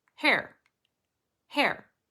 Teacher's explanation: starts just on the sound air with the vocalization air air hair does not start on the vocalization it has a voiceless sound first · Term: h sound